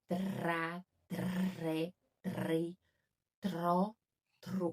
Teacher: eu tenho R forte em espanhol e é bem na ponta da língua